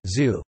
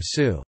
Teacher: the tip of the tongue points toward the upper teeth and friction occurs at the tip (apex) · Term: voiceless apicoalveolar fricative